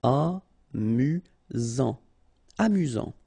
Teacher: You've got only one S here between the vowels, so it's really this Z sound.